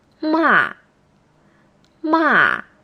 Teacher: a voice that starts high and Falls